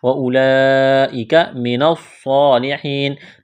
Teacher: نون کو صاد کے ساتھ ٹچ کرنا ہے، ملانا ہے، صاد میں سیٹی کی آواز پیدا کریں گے۔ صاد کو موٹا کرنا ہے، کڑا زبر ہے، ایک الف کے برابر کھینچنا ہے۔